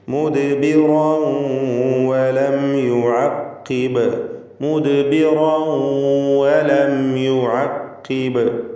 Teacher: തൻവീനിനെ വാവിലേക്ക് ലയിപ്പിച്ച് മണിച്ചുകൊണ്ട് ഉച്ചരിക്കുക. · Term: ഇദ്ഗാം ബിഗുന്ന